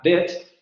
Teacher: la palabra bet, que tendríamos que pronunciarla con una vocal media cerrada, anterior central, no labializada